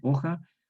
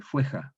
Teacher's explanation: Entonces la O cerrada no diptonga, queda O.